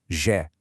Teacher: It requires just a little bit of vibration right there in your vocal cords.